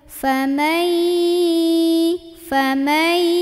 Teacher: فَمَن, nah ini nun ketemu ya, nunnya masuk ke ya, tapi jangan lupa dengung dulu